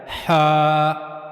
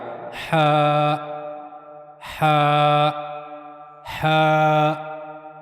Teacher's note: तो हा जो है वो गले के दरमियाने हिस्से से अदा किया जाता है। हा तो हा को पढ़ने के लिए और हा को अदा करने के लिए गले के दरमियाने हिस्से का इस्तेमाल किया जाएगा।